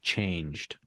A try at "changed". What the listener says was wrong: But notice that we need to try and enunciate clearly the ed suffix at the end there.